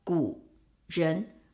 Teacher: For example, 古人, ancient people or people in the past. 古人, 3, 2, but it becomes 古人, half third tone, and then 人 keeps its second tone.